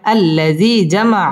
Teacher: মা জবরের বাম পাশে খালি আলিফ, মদের হরফ এক আলিফ টেনে পড়তে হবে।